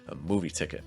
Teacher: It's a compound noun, so you really should be stressing movie